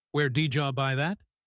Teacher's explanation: Did often turns into a quick d sound when it is followed by you.